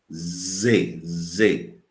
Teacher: Então, a gente percebe claramente, né, que a vibração das cordas vogais, as cordas vocais, a gente diz Z, Z. Já sente a vibração das cordas vocais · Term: Z vozeada